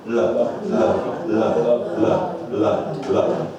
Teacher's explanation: And it's just using the tip of the tongue. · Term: light L